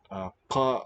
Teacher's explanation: a uvular stop with a slow release. So you have this long affricate.